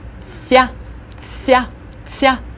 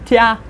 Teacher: when you say te and ya together, you should kind of insert a little bit of an S sound to it. Soften it and put an S sound, and you get a tsya, tsya, tsya.